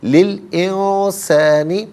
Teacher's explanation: انسانی میں آپ دیکھیں نون ساکن، اس کے بعد سین حرف اخفا ہے، تو نون ساکن کو اخفا کے ساتھ پڑھا جائے گا